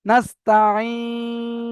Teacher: মাদ্দা আরিজ ওয়াকফি হবে, 3 থেকে 4 আলিফ পরিমাণ টান দিয়ে পড়তে হবে।